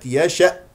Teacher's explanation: اسمع قفل الاوتار الصوتيه في الاقصى الحلقه الهمزه